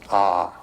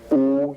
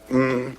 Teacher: you start in the back of the mouth ah and then ooh you fill the mouth and um closes at the mouth